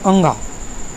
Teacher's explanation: कंठ से भी बोला जाता है और नासिका से भी इसकी मदद ली जाती है